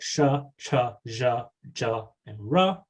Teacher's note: sha cha and ra all involve some level of lip rounding